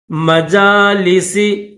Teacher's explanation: جیم کے اوپر کھڑا زبر ہے تو اس کو تھوڑا سا کھینچیں گے